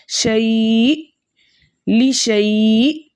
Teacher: حمزہ ساکن کی آواز اس کے مخرج میں جھٹکے کے ساتھ رکتی ہے